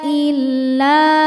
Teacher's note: Cara bacanya huruf lam ini panjang dua harakat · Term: mad thobi'i zahiri